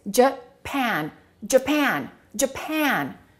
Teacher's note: The first syllable is reduced and the second syllable is stressed. So this will sound like uh and this a will sound like e.